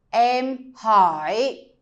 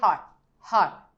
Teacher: Go a little bit up and then way down. We usually do this when we want to emphasize the word.